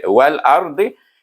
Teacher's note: Tepi lidah anda pergi kepada geraham gigi atas.